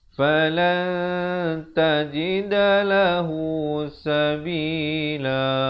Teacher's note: bila datang ta dia disamarkan bunyi di antara nun dan ta, itu 2 harakat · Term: Ikhfa hakiki